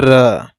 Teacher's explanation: लुंठित व्यंजन देखेंगे तो इसकी परिभाषा होती है कि जिस व्यंजन के उच्चारण के समय जीभ की नोक वायु से रगड़ खाकर कांपती है उसे प्रकंपित व्यंजन कहते हैं या फिर लुंठित व्यंजन कहते हैं।